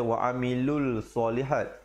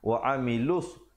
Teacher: Di situ hukumnya alif lam syamsiah. Jadi bila alif lam syamsiah, lamnya tidak dibunyikan.